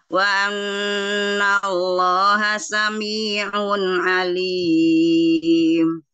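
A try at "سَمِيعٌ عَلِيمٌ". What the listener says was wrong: Ya, dhammahnya masih malu-malu kuciang ya. Enggak maju. Nih, maju.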